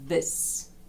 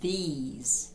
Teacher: в першому випадку без посмішки розслаблені м'язи в другому випадку посмішка і звук довший